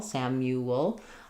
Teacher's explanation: a little bit of a schwah there or an uh sound before the L. And because I'm going from a rounded U to the the dark sound, a little W connects those two.